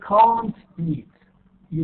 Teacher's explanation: can't is stressed so the vowel is not reduced